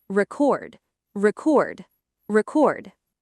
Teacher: Now the verb form stress on the second syllable.